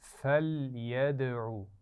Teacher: لام پر قلقلہ نہیں ہونا چاہیے